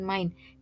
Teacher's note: bukanlah diftong karena baik a maupun u atau I masing-masing mendapat tekanan yang hampir sama dan membentuk suku kata tersendiri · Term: deretan vokal